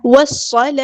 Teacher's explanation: لام شمسیہ ہے تو اس کو ہم ظاہر نہیں کریں گے صاد ہمارا ہیوی لیٹر پورا ادا کریں گے حروف صفیریہ میں سے تو سیٹی ہوگی · واو کو ہم نے صاد کے ساتھ ملا دینا حمزۃ الوصل ہمارا ڈراپ ہو جائے گا